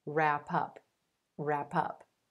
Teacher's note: that p at the end of rap is going to link over in front of the word up and make it sound like pup wrap up wrap up all